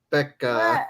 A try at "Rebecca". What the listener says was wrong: Trying to say the R is not easy.